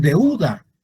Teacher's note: la e y la u la vocal abierta y la vocal cerrada se pronuncian como una sola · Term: diptongo